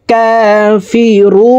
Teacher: রু 3 আলিফ টেনে নুনকে সাকিন করে ফেলবো, মদের হরফের বামের হরফে ওয়াকফ হইলে মধ্যে আরজি 3 আলিফ টানিয়া পড়িতে হয়।